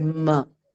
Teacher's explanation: a part of the air is also expelled through your nasal cavity instead of your mouth